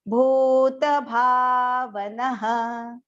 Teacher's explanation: the visarga after na is pronounced as ha